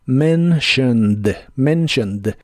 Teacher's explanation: en la palabra mentioned la t se pronuncia como sh mentioned la o se pronuncia muy muy suave y la e de casi al final no se pronuncia